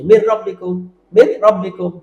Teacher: বালা মানে এখানে কোনো গুন্না নেই, ইদগাম হচ্ছে মিলে যাচ্ছে বাট কোনো গুন্না নেই, র লামে। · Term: ইদগাম বালা গুন্না